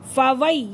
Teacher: या साकिन से पहले ज़बर आ रहा है तो ये लीन हो रहा है